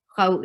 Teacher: khaw is 2 counts long